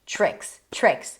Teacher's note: T and R together. They lead into a ch sound.